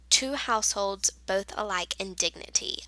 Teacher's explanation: Amic pentameter is a line of verse with five metrical feet each consisting of one short or unstressed syllable followed by one long or stress syllable